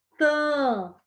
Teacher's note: porque o AM, sonoricamente, ele é o A nasalizado.